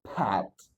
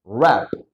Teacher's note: Jadi ditekan ya, diletupin.